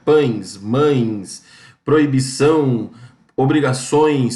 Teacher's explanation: vocês notaram que o nariz de vocês treme quando vocês pronunciam essas palavras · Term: ditongo nasal